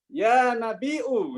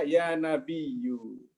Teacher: orang-orang Bani Tamim ya, Badui dan yang Bani Tamim itu suka dengan hamzah ketika manggil Nabi